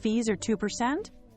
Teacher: That drop says, this point is settled. Avoid a rising tone at the end. Fees are 2%, which can sound unsure or seeking approval.